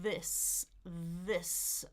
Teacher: So when it's singular, it's what we call short i and it's the unvoiced s.